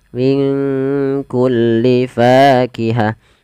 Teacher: maka cara membacanya samarkan nunnya kepada huruf Kaf minkku langsung kepada makhraj huruf Kaf Min kulli fakihah P falfa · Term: bacaan Ikhfa, ikhfa